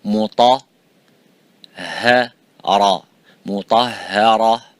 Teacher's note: Ra is strong, full mouth. But the ha is empty mouth.